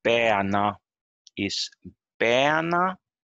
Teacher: the first syllable is normally stressed